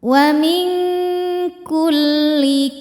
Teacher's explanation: Jadi bunyinya eng ya. Karena kaf makhrajnya jauh dari nun maka bunyi dengungnya besar. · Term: ikhfa hakiki ab'ad